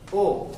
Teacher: ओ मिलकर बना है अ और उ से। ये ओ जो है ये भी एक संयुक्त स्वर है, और ये अ धन उ से मिलकर बना है।